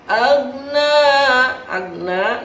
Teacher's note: perhatikan mengucap agna tidak boleh turun, tidak boleh ada pantulan. Ma agna, jangan agna karena huruf ghain bukan huruf qalqalah.